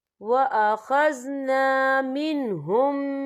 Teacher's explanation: ہم پچھلے میم کو اگلے میم میں مدغم کریں گے اور ہم یہاں غنہ بھی کریں گے۔ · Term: ادغام شفوی